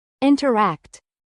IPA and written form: ˌɪntərˈækt (INTERACT)